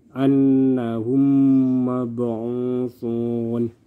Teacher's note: mim sukun disini melebur ke dalam yang berikutnya dan disertai dengan dengung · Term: idgham mislain